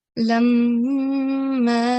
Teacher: so we have to do 2-second nasal sound. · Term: Ghunna